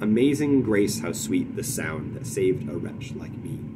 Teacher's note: those are alternating lines of iambic tetrameter and a iambic trimeter